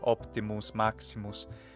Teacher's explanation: having that bilabial consonant right nearby the M or the P, like an optimus, maximus, has an effect on that vowel for me when I speak that. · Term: reduced vowel